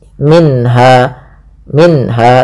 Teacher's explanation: Kemudian pada lafal minha ada bacaan izhar halqi, yaitu suara nunnya dibaca dengan jelas. Minha, minha, tidak boleh minha, langsung saja.